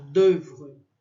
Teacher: esse O e U é só um E bem fechado, d'oeuvre. E esse R, eu aprendi com um professor em francês que ele falava assim, olha, raspa a garganta, sabe?